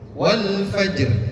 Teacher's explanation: Tipis saja. Tipis saja karena dia sukun. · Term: ro tipis